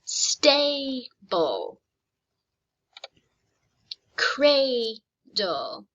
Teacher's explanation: this is no longer a short a it's going to make the long a sound because it comes at the end of my syllable